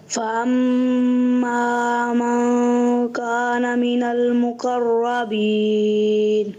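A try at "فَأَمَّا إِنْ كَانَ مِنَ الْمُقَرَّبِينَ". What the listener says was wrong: جی ہاں, آپ سے فَأَمَّا ان کانا کی بجائے من گانا ہو گیا. تو یہاں پیارے بچے من نہیں ہے, ان ہے.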